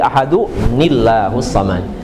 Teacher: tanwinnya enggak dibaca karena satu pindah ke bawah ke nun wiqayah